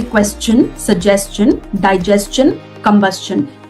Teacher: कोई भी word जो STION पे end होता है उसको हम शन नहीं बोलते, चन बोलते हैं.